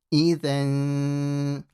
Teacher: So when you have a tanween and then certain letters of the Arabic alphabet, if you have one of these certain letters, then you will do a light ghunna, which we call ikhfa.